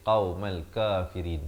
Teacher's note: qaumal qaf makhrajnya di pangkal lidah. Lidah kita itu di belakang dia. Di belakang sekali, qaumal kafirin, ya.